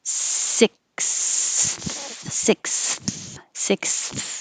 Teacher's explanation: You have to go from the S to the TH. So your tongue should be behind your teeth for the S and then between your teeth for the TH.